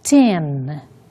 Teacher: nós não temos o som do N em final de palavras em português. Então, temos que cuidar com esta pronúncia, porque ela não é tão nasalizada quanto é em português